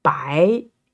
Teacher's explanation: the second tone going up. So bo, I, bai.